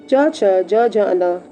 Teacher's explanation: च, छ, ज, झ, न तालु से बोला जाता है।